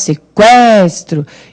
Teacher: O U é fraquinho, não é? O E que é forte, sequestro, e o U é pronunciado.